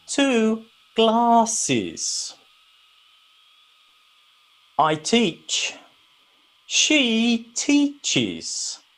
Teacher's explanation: some words that end with es in this case we make another syllable